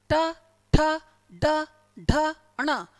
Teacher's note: इनको जब बोल रहे हैं ना, तो जीभ पीछे की तरफ जा रही है, लेकिन ट वाली लाइन को बोल रहे हैं तो जीभ आगे की तरफ आ रही है। जब ट वाली लाइन को बोल रहे हैं तो जीभ आगे की तरफ टच कर रही है।